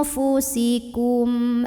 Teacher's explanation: syafawi karena ada mim sukun yang ketemu sama huruf hamzah maka mim sukun nya ini dibunyikan dengan jelas bunyi m dan tidak ditahan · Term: izhar syafawi